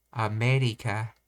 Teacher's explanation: Consider the word America. Americans pronounce me with a slightly higher pitch and slightly longer duration.